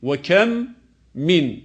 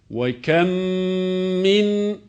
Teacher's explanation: aynı harf kendi cinsinden olan harekeli olan harfe idğam edilerek okunacaktır yine bu kelimelerin okunuşu ayrı ayrı değil yani ve kem min şeklinde değil birlikte idğam edilerek ve kmin şeklinde okunacaktır